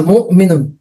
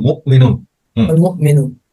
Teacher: মুমিনুন একটা ধাক্কার মতো লাগবে, কিন্তু পুরোপুরি ধাক্কা না, আপনার বাতাস বের হবে না, থেমে যাবে। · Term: হামজা